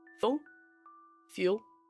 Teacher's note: in a Glasgian accent is that the long oo comes a bit shorter, but the short uh comes a little bit longer. That is why in a Glasgian accent, good and food will rhyme and full and fuel will sound quite similar.